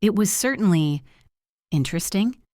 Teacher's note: But listen to the pause before interesting.